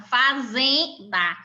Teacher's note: A sílaba tônica é o zen, pois é a sílaba que é pronunciada com uma maior força na palavra